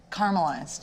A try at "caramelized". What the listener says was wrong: Which is wrong, there's like an A in it. There's just a whole other letter that you're omitting.